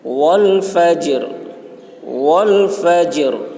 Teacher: جب ہم ٹھہر رہے ہیں تو را کی آواز ظاہر ہو رہی ہے